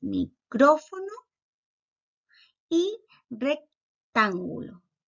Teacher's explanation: luego tenemos las palabras esdrújulas donde la sílaba tónica es la antepenúltima